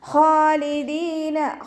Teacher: ഖ ഇസ്തിഅലാൻ്റെ ലെറ്ററാണ്, നല്ലോണം ഉയർത്തിയിട്ട് ഉച്ചരിക്കുക. ഖാലിദീന, അലിഫ് സ്വഗൈറ കൂടെ വന്നിട്ടുണ്ട്, 2 കൗണ്ട് നീട്ടിക്കൊടുക്കുക.